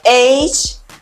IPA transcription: eɪtʃ